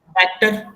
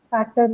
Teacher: so the stress is on first syllable